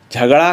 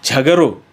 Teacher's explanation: शब्दांत आ के स्थान पर ओ हो जाता है, जैसे झगड़ा को झगड़ो।